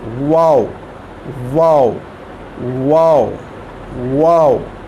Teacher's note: जब शुरू करेंगे तब भी गोल होंगे, जब मुकम्मल करेंगे वाव को तो तब भी ये गोल होंगे हमारे होंठ।